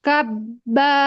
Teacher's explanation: ditahan suaranya ditahan nafasnya. ditekan sedikit pada bibirnya terus dibaca kabba